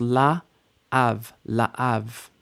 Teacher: make sure that you hear that we're not mushing these vowels together. 2 distinct vowels.